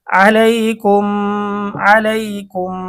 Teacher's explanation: এখানে মিম সাকিন মিম সাকিনের পরে মিম আসছে এজন্য গুন্না হবে মিম সাকিনের ইদগাম